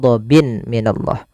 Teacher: bertemu mim tanwinnya dimasukkan itu yang kita namakan dengan Idam bunna disertai dengan gunah masuk ke rongga hidung kita